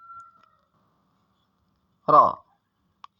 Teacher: Ra ini ketika membaca, maka dibaca dengan jahar atau tidak ada suara nafas terdengar ketika mengucapkan huruf ra